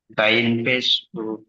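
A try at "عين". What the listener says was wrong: আইন, আইন, গইন নয়। গইন হলো ওখানে ওখানে একটা নোক্তা থাকতো, আইনের উপরে নোক্তা থাকতো।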